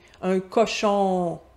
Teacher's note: Au Québec, notre on vient du O ouvert.